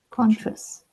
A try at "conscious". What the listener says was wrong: I can hear like something like a T sound sometimes when you're doing it.